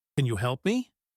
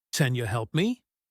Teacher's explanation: The can becomes con and you becomes yah. Much faster and more natural sounding. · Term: reduction